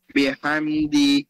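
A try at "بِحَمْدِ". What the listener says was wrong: Ha must be sharper. Bihamdi.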